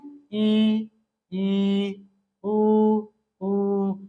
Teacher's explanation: वो कहलाएंगे समृत स्वर कौन-कौन ई ई ऊ ऊ देखिए मुंह लग रहा है कि बंद ही हो गया है इसलिए ये संवृत कहलाएंगे